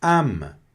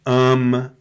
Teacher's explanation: Não é ama, não é nasalado, é âme